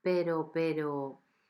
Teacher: because the R is in between and it's just one R, the R sounds soft